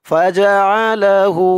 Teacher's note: হা উল্টা পেশ হু, এক আলিফ টান দিতে হবে উল্টা পেশ হওয়ার কারণে।